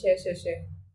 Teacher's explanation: कोई कंपन यहां पर नहीं हो रहा ठीक है कोई वाइब्रेशन नहीं हो रहा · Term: अघोष, एगोस